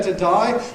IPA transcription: təˈdʌɪ